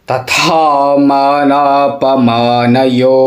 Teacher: पयो हम हिंदी में तथा बड़ा लाइटली बोल देते हैं लेकिन संस्कृत में महाप्राण होता है था तो था का उच्चारण पावर के साथ में होना चाहिए